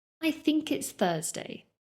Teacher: Remember, the most important thing about the th sound is that the tip of your tongue is placed between your teeth and you do not use your voice to pronounce it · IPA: /θ/